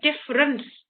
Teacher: difference d i double f e r e and c e we don't hear the e here we just hear difference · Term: unstressed vowels